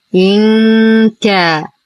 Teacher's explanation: لدينا نون ساكنة وبعدها حرف الكاف، الحكم إخفاء حقيقي مع غنة كاملة مرققة